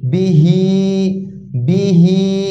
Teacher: হালকা একটু টান আসবে, এক আলিফ পরিমাণ হালকা টান। অর্থাৎ এক হরফে টান হবে না, আর হরফে টান হবে।